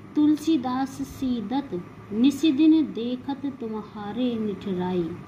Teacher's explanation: उपयुक्त उदाहरण में दंत्य वर्ण देखिए त, ल, स, द, स, द, त, न, स, द, न, द इनकी आवृत्ति हुई है जो कि एक ही स्थान से उच्चारित होने वाले हैं, अर्थात दंत से उच्चारित होने वाले हैं